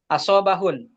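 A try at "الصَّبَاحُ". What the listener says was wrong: Ah, yang panjang di baknya. As-sobahu.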